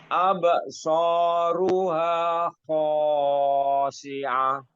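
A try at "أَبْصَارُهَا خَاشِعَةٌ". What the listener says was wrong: Terlalu panjang, Pak. Khasyi'ah.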